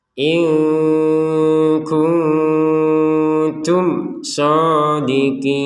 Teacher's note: Nun sukun bertemu kaf baca dengan samar, nun sukun bertemu ta samar juga. Mim sukun bertemu shad jelas.